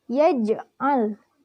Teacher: Karena huruf qalqalah jim berharakat sukun dan posisinya ada di tengah-tengah kalimat. Cara membacanya dipantulkan secara ringan. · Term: qalqalah sughra